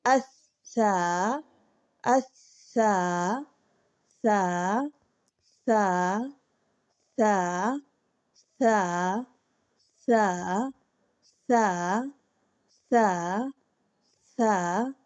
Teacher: सा अदा करते वक्त जो जुबान की नोक है यह ऊपर वाले दो दांतों के किनारों से लगेगी